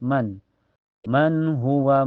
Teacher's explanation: Setelahnya ada hukum idhar halqi karena nun sukun ketemu ha ya cara bacanya nun sukunnya dibaca jelas